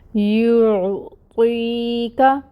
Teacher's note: یا ساکن سے پہلے کسرہ، تو یہاں پہ یا مد کا رول، یا مد کی ادائیگی ہوتی ہے 2 کاؤنٹس کے برابر۔ کاف کے اوپر جو فتحہ کی حرکت ہے وہ 1 کاؤنٹ ادا ہوگی۔